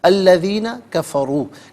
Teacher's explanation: کفروا میں را پر پیش ہے، را پر زبر یا پیش ہو تو را کو پر پڑھتے ہیں